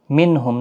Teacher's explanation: نون ساکن کے بعد حروف حلقی کا ہے، اظہار حلقی ہوگا، گنہ نہیں کریں گے